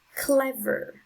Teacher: so the syllable with the strongest sound is the first one